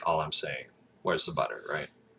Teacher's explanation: you add an inflection at the end of your sentence you kind of like elevate your pitch a little